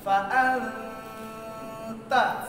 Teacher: কোথায় ছিল ফা আনতা, আনতা আনতা, এখন নুন যে মাখরাজ থেকে উচ্চারণ হয় ওখানে রাখা যাবে না, তার মাখরাজ যাবে আত, এই ওখানে চলে যাবে জিহ্বা গিয়া মাখরাজে হালকা স্পর্শ করবে এবং নাক দিয়ে গুন্না। ফা আনতা, আপনি যদি ফা না করতে তাহলে ফা আনতা, নুন শোনা যেত, নুন তার জায়গা থেকে উচ্চারণ হবে না, তার জায়গায় চলে যাবে তা।